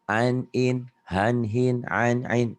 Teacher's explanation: sini adalah hukum nun mati tanwin ketem huruf Idhar betul Jadi dibacanya innya jelas apa adanya tanpa ditekan tanpa ditahan